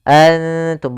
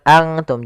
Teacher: Karena dia ikhfa itu menyamarkan huruf kepada huruf setelahnya. Yaitu nunnya disamarkan kepada huruf ta. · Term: ikhfa aqrab